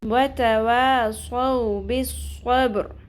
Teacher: را کو پر پڑھیں گے کیونکہ را ساکن سے پہلے زبر آ گئی